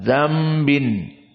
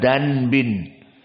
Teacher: Dambin, maka nun sakinah bertemu dengan ba, maka iklab.